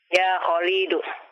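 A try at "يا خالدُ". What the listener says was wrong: Lamnya jangan dipanjangkan. Ya Khalidu.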